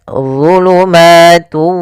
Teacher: Kemudian zulumatu, di sini ada dha tebal, ujung lidah kita menempel dengan gigi seri atas dan pangkal lidah terangkat.